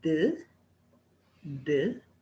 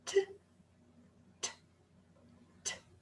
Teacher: One of them is voiced. It produces a vibration, d. The other one is voiceless. It doesn't produce a vibration, t. That's the only difference between those two sounds.